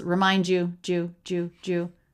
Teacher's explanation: So ending D and the word you. This is a special case where we often get a sound that sounds like J, which we write in IPA with these two symbols. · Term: J sound